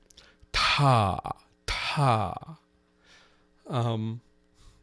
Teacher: people talk about it as a puff of air. It's also a delay in voicing of the next segment. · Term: aspiration